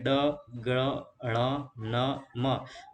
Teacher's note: હવા જે છે મુખપથ એટલે કે મોઢામાંથી અને નાકમાંથી બંને જગ્યાએથી પસાર થાય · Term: અનુનાસિક વ્યંજનો